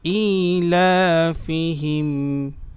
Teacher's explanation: ই টান হবে, হামজা খারাজের ই, লাম খারাজ জবর লা, দুইটাতে একই পরিমাণে টান হবে, তাই আমরা এভাবে বলি, ইলাফিহিম।